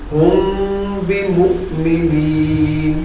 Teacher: تو یہاں میم کے بعد، میم ساکن کے بعد اگر با آ جائے گا تو وہاں بھی غنہ ہوگا. اسے اخفاء شفوی کہتے ہیں.